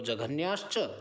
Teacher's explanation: जहाँ च छ आता है विसर्ग के बाद, तब हम विसर्गों को तालव्य श करते हैं